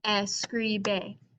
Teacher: my second to last syllable has the stress according to the rule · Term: stressed syllable